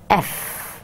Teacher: by touching the bottom lip to the upper teeth